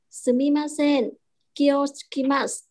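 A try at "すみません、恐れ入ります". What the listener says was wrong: Ok. Bạn phát âm cũng khá là tốt đó.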